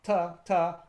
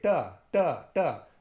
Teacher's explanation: the tip of my tongue is actually flicking off my palate in the back of my mouth.